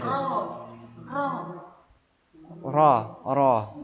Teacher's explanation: Ujung lidahnya. ditempatkan di belakang apa? Langit-langit paling belakang.